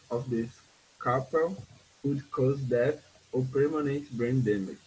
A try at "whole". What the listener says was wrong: You are pronouncing the age in whole as an R in roll. Like you said, after 15 rolls. It's not rolls. Here is whole.